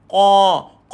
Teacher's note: Ingat huruf qaf ni duduk dekat pangkal lidah. Bila kita naikkan dia akan ada aliran angin yang sempit